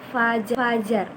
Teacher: jika dirasakan ada udara yang keluar antara si bibir bawah dan gigi atas ya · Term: fonem F